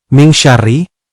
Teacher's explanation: Nun mati bertemu syin ming syarri adalah hukum ikhfa yang harus dibaca samar dan berdengung